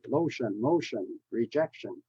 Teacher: And the shun, you stress the one right before the shun sound